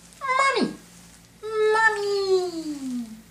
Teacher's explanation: It ends up being a really high pitch because it makes me happy.